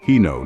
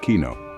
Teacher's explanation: The KJ and SKJ sounds aren't like English K, they're soft, almost like shush or H.